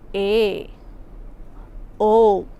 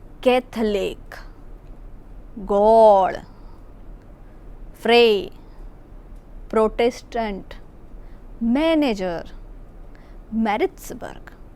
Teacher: નીચેના શબ્દોમાં એ અને ઓ પહોળો ઉચ્ચારાય છે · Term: વિવૃત એ અને ઓ